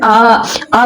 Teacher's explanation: मुख द्वार पूरा खुलता है। जैसे आ बोल रहे हैं ना तो आपका जो पूरा मुंह खुल रहा है। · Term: विवृत स्वर